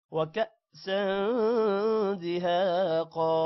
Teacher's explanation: وكأسا کاف کے بعد حمزہ ہے، حمزہ پر جزم ہے، تھوڑا سا جھٹکا دیں گے.